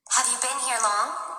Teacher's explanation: كأنها بتطلع بتمد فيها في آخر إشي في الجملة في السؤال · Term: rising intonation